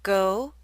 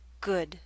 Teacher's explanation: For which vowel sound is your mouth more tense and your lips are more rounded? Your mouth should be more tense and your lips should be more rounded for the O in go.